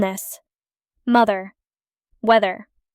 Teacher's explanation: th as in this, mother, weather, often replaced with d or s